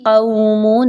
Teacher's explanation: قاف کے مخرج پہ خاص توجہ دیجئے، قاف کو موٹا کر کے پڑھیے۔